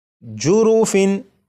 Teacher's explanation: تنوین کے نون ساکن کو چھپا کر نہیں پڑھنا بلکہ یہاں پر اسے ظاہر کرنا ہے